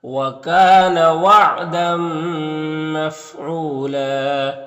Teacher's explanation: او میں واو مدہ ہے اور یہاں پر دو زبر وقف کریں گے تو ایک زبر کے ساتھ الف پڑھیں گے اس طرح سے. وَكَانَ وَعْدًا مَفْعُولًا.